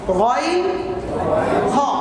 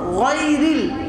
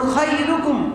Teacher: আর একটা আছে গাইন এবং খ, কণ্ঠনালীর অগ্রভাগ থেকে, মানে এখান থেকে গাইন খ।